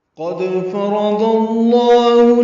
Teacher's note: قد فرض اللہ میں قاف پر ہے، دال باریک ہے، دال ساکن پہ قلقلہ ہے. قد فرض میں تینوں زبریں ہیں، فا را جلدی ادا کریں گے، را پر پڑھیں گے، ضاد کو لام اسم جلالہ سے ملانا ہے.